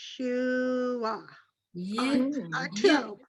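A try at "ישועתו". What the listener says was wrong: Yeshu, Yeshua to. Perfect. Very nice.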